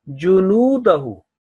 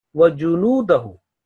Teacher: So noon will be prolonged about 2 seconds because of waw maddiya, waw of elongation.